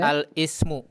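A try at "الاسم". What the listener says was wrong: Ini hamzah wasal di tengah. La, jangan al.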